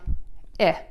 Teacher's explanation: Your mouth is slightly open and more relaxed, and that vowel is short. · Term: short I sound